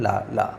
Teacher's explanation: मुख बीच में क्या होता है बंद हो जाता है और दोनों साइड से क्या होती है आपकी वायु निकलती है हवा निकलती है तो इसको हम लोग क्या बोलते हैं पार्श्विक · मुख द्वार मध्य में बंद हो जाता है और कह रहे कि हवा दोनों ओर से निकल जाती है तो इसको हम लोग क्या कहते हैं पार्श्विक व्यंजन कहते हैं